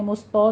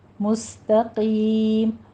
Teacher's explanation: آگے تا کو بھی باریک رکھنا ہے، مستو نہیں کہنا، مستقیم، تا باریک اور قیم کو پر پڑھیں گے ، آگے مدارس وقفی کر دیں گے، 6 کاؤنٹ کرنا ہے۔